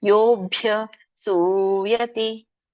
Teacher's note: ಯೋ ಎಳಿಬೇಕು, ಸೂ ಎಳಿಬೇಕು.